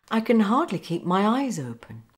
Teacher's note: P and M are made with the same part of the mouth here on the lips, P and M, but P is unvoiced and M is voiced.